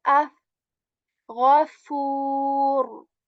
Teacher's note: Okay, this fa letter here is just like English alphabet F. You put the tip of your upper teeth onto your lower lips. Okay, when saying fa, and air comes out of your mouth when saying fa, like af, ghafur.